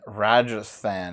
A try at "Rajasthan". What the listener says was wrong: You said Rajasthan. Like there's no extra TH in there.